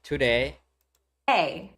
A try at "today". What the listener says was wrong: Not today. Not against the teeth. Not with the tongue tip. The blade of your tongue a little bit farther back. Today.